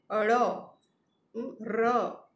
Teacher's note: ળ મૂર્ધન્ય છે, જ્યારે ર એ દંત્ય છે. આ વ્યંજનોના ઉચ્ચારણ વખતે જીભ કંપે છે, કંપન અનુભવે છે, ધ્રુજે છે, અને એટલે એને આપણે પ્રકંપી વ્યંજનો કહ્યા છે.